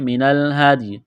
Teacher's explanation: فمستیسر را کو موٹا کرنا ہے، من الہدی ہدل زبر حد، دال ساکن ہے تو دال پر قلقلہ کریں گے